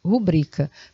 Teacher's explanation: porque bri é a sílaba tônica, palavra paroxítona